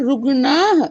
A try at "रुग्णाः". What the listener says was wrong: बहुवचन। बहुवचन है। हाँ, आपका उच्चारण एक वचन का हो रहा था।